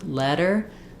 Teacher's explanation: And so for letter, that vowel is relaxed. It's a lax vowel.